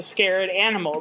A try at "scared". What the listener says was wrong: You put an extra syllable in the word scared. You said scared animal. Yeah, you said it is a